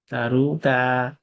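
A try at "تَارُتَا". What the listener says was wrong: না, তাতে ভাই একটু মাদ আছে, তারুতা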